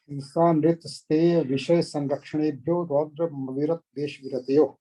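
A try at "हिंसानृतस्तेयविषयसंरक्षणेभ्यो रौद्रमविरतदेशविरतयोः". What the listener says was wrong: नहीं आ नहीं बोलना अलग से, अभी संधि विच्छेद मत करें।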